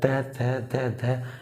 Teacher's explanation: ये जो जीभ है तुम्हारे दांत को बाहर को पुश करेगी, यानी कि दांत को टच करेगी तुम्हारे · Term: दंतव्य